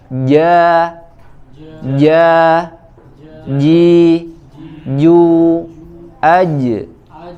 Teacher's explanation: Contoh yang lain misalkan huruf jim, shin dan ya, ja, ji, ju, aj, ya itu terjadi pertemuan dua unsur makhraj ya antara lisan dengan langit-langit bagian tengah ya, bagian depan ya.